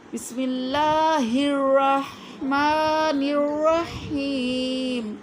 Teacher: کہ سے حلق کے آخری حصے سے ہو، ہا وہ والی، اور رح میں ہا دوسرا ہے وسطی حلق، ٹھیک، حلق کا درمیانی حصہ وسط حلق جس کو کہتے ہیں